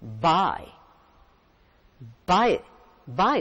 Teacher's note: one vowel sound and then another and while you pronounce them you move from one vowel sound to another there is a movement a glide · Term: diphthongs